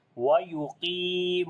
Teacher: Qaf we read in heavy sound, but not too much, and we long due to ya madda. Similarly, mim we long due to waw madda.